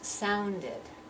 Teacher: now I have to pronounce the e D ending as if it's completely separate syllable so sound becomes sounded and I need to hear that rhythm